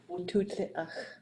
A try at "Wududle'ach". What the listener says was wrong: Wududle'ach. Wududle'ach. So again, once we get to the du, that fourth person is going to put the D. It's like a dude. You got to have the D at the end, bro. Doodle, dudze, duje. Has to.